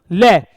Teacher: जीभ का अग्रभाग ऊपरी दांत पर लगेगा, ऊपरी मसूड़े पर लगेगा, दंत मूल पर लगेगा, इसलिए ले क्या हो गया, दंतीय।